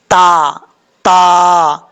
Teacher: اب سمجھنے والی بات کیا ہے، یہاں پہ سمجھنے والی بات یہ ہے کہ جو تا دو نقطوں والا ہوتا ہے، وہ تا اس کا مخرج ہے زبان کی نوک اوپر والے دانتوں کی جڑوں سے لگے تو تا پڑھا جاتا ہے